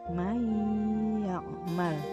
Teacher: Berikutnya may ya'mal, nun mati lebur menjadi ya, May ya'mal, nunnya tidak terbaca karena bertemu dengan huruf ya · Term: idgham bigunah